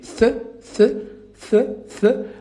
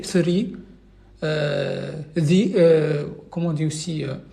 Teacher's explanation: Donc la langue, il va vraiment dépasser les incisives. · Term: le TH